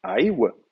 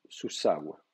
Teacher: la triphtongue aïw s'est contractée en aou